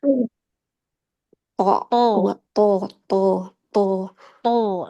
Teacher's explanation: dia bibirnya enggak maju tapi pangkal lidah naik di dalam. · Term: huruf tebal